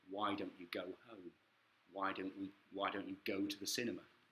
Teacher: main stress is here on why and the verb that follows the you